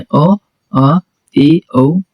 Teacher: अर्ध विवृत में मुंह आधा खुलता